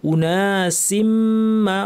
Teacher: মিমের উপর তাসদিদ, লম্বা গুন্না।